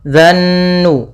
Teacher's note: Pada lafal fa idzan nujumu, lafal an-nujum di sini ada alif lam syamsiyah, yaitu alif lam yang ditulis tapi tidak dibaca. Kita langsung pada lafal zal langsung ke nun. Dzannu. Kemudian pada lafal nun sendiri ada bacaan gunnah, yaitu kita tahan suara nunnya sepanjang 2 harokat.